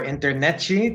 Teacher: Again, sometimes it's internet-y, but it's also common to change that T into what we think is a CH